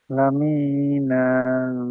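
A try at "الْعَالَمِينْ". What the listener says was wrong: মি না বললে হবে না, আলামিন, এইভাবে কি করতে হবে? হ্যাঁ, এইভাবে আমাদেরকে সাকিন করতে হবে।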